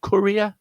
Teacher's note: the courier has three syllables, and the stress point is in the first syllable